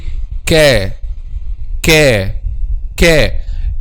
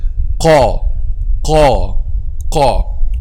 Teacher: Okay, so I will say letter qaf or any one of these letters without circling the lips. I just raise the back of my tongue, or the deepest part of the tongue